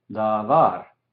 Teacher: Cuando enfatizamos una sílaba, damos el énfasis a esa sílaba se llama la tónica. Entonces, en la palabra davar que vimos, var, la segunda sílaba, es la sílaba tónica porque enfatizamos eso.